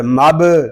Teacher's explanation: با ساکن ہے، اس میں کلکلہ خوب ظاہر کریں گے